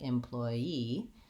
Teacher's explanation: we also can say this word employee with last syllable stress in which case it would be more like employee same sounds